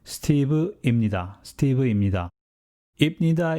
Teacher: when you pronounce it at normal speed you say imnida instead of ipnida that's because when pupachim collides with neon the pube is morphed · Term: consonant's collision